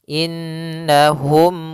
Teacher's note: Kemudian di sini pada lafal innahum yaitu nunnya berharokat tasydid, maka kita namakan dengan bacaan gunnah. Maka kita tahan dulu suara nunnya. Baru dibaca na.